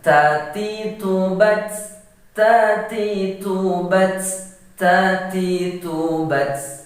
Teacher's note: ingat huruf ta sifatnya hamas, sama seperti huruf kaf. Jadi dia ada angin yang mendesis.